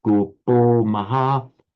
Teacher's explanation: So here we have kopo and kopas, same word, but by sandhi kopaha, followed by a voiced consonant ma, becomes kopo maha